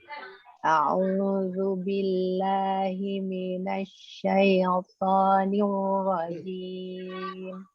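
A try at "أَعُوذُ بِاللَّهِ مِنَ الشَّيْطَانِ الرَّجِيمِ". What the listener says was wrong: Masih syai-nya ya. Nanti latihan di syaitonnya. Pastikan syai. Iya, terlalu cepat masuk ke to-nya. Hati-hati juga jangan terlalu lambat masuknya.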